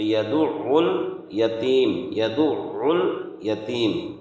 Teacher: یہاں عین کے مخرج کو درست کرنا ہے اور حرف عین کو نکالنا ہے. حرف عین یہ حلق سے، درمیانی حلق سے اس کا یہ نکلتا ہے